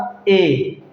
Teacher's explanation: ए दोस्तों, थोड़ा सा हमारा मुंह ऐसा भी नहीं लगेगा कि बंद है, ठीक है, और ऐसा भी नहीं लगेगा कि आधा खुला हुआ है। ठीक है, तो जब ए बोलेंगे, ए का उच्चारण करेंगे तो आधे से कम खुलेगा मुंह उसमें